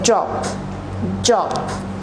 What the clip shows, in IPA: dʒɒb